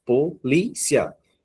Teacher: o li, ela vem acentuada não na última sílaba. Não é o cia. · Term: paroxítona